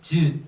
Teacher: 센입천장, 입천장이 앞에 딱딱한 곳에 닿았다 떨어지면서 나는 치 등이 있는데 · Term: 경국의 음